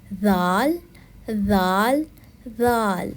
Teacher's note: ذال زبان سے ادا کیا جانے والا حروف ہے. زبان کی نوک جب اوپر والے دانتوں کی نوک سے ٹکراتی ہے تو ذال ادا ہوتا ہے.